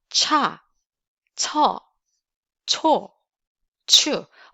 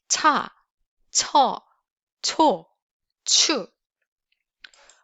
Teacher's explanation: So we have a similar sound in English, like chest, China. The level of the air in terms of the air pressure, it's a little bit stronger in Korean.